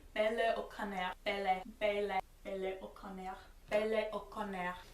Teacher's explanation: It's got a bit of a rolled R at the end, but really they make my name two really distinct syllables, and I feel like in English my name is one syllable and then a little bit of a half syllable at the end, but really there's almost a glottal stop in there, and they don't even have those in French.